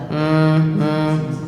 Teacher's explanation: kalau dia sukun bacaannya dua satu keluar dari hidung ya terdengar yang kedua dari bibir · hidung ya terdengar yang kedua dari bibir jadi rahim m m ada dari hidungnya bunyinya seperti lebah · hidungnya bunyinya seperti lebah hm hm nah ini disebut dengan gunnah gunah artinya dengung sengau keluarnya dari hidung ya